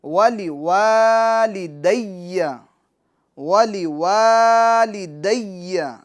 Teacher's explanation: ولی لام کو کھینچنا نہیں ہے، وا ایک الف کی مقدار کھینچنا ہے، لی کو کھینچنا نہیں ہے. دی یا مشدد ہیں، ٹھیک ہے.